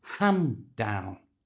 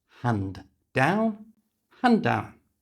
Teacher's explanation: we don't pronounce the D, the D sound at the end of hand, and it becomes hand down.